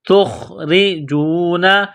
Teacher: را کے نیچے زیر ہے، را کو باریک کرنا ہے